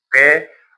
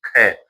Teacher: जैसे क ख बोलेंगे और फिर ग न पहला दूसरा पहला दूसरा ऐसे होता है क बोलेंगे हम जैसे पहले क इसको बोल के देखो क और फिर ख बोल के देखो हाथ लगा के ख हाथ से श्वास वायु टकराती है इसका मतलब ज्यादा निकल रही है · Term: महाप्राण